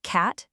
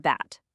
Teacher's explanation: Take cat and bat. The only thing that's different is that first little puff of air, a C- sound versus a B sound.